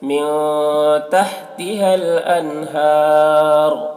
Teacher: یہاں پر را کو پر پڑھیں گے کیونکہ را کے اوپر پیش ہے